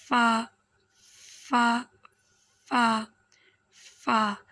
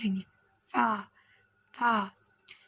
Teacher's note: ऊपर के दांतो के किनारे और निचले होट के तर हिस्से से फ अदा होता है